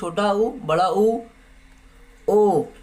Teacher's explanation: देखिए बोलिए आपका ओठ देखिए गोलाकार हो रहा है। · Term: वृत्तमुखी